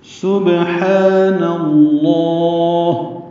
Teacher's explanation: سین صفیر کی آواز سے ادا کرنا ہے، یعنی سیٹی کی آواز سے، باریک آواز ہوگی، با سے ملائیں گے، با ساکن ہے، اس پہ قلقلہ ہوگا۔